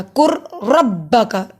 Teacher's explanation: جزم اور شد ایک ساتھ آ گئے تو میں نے جزم نہیں پڑھا، میں نے شد والا پڑھا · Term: ادغام